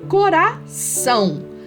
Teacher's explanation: a sílaba tônica é a última sílaba